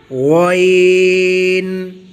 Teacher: گلے کے اس حصے سے جو منہ کی طرف ہے وہاں سے غین پڑھا جائے گا موٹی آواز کے ساتھ